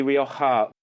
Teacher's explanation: It's actually sort of halfway between an H and a K, really.